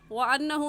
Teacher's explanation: نون مشدد ہے اور نون مشدد پر ہمیشہ غنہ ہوتا ہے، اس وجہ سے غنہ کر کے پڑھیں گے